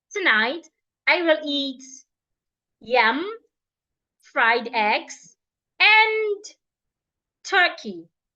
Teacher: we also use a rising tone when we are listing things